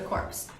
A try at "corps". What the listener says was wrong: Core. P.S. is silent.